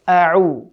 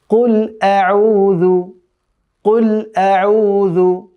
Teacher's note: প্রথমটি হামজা, তারপরেরটি আইন, অর্থাৎ কণ্ঠনালীর মধ্যভাগ থেকে উচ্চারণ হবে